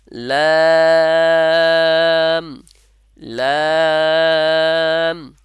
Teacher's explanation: শুধু মাথা লাগাইলে হবে না জিহ্বার, কিছুটা সামনের কিছুটা অংশ উপরে যে তালুর সঙ্গে আছে তার সাথে লাগলেই উচ্চারণটা আসবে